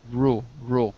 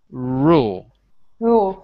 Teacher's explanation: your tongue moves but it doesn't touch your teeth it doesn't touch the roof of your mouth